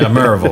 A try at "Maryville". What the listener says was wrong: There is no Y in Maryville.